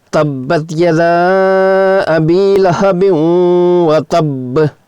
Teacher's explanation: تلفظ کے لیے دونوں با ساکنوں کو دو کی مقدار میں لمبا کر کے پڑھیں گے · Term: با مشدد